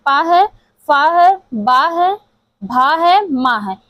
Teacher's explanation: ये प वर्ग का उच्चारण स्थान ओष्ठ से होता है।